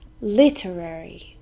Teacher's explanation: four syllables and we stress the first one